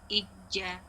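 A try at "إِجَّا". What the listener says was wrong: Jangan turun suara. Ija. Tashdid mana kuatnya? Ija.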